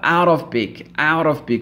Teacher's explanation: le T il disparaît